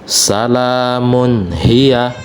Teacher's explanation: Jadi mim di sini tanwin bertemu dengan huruf ha. Nah, maka tanwin dibaca jelas.